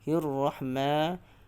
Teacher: Dan di sini juga kita ketahui ia adalah hukum idgham syamsiyah ataupun alif lam syamsiyah. Jadi perlu diidghamkan huruf lam itu, perlu diidghamkan kepada huruf ra yang syaddah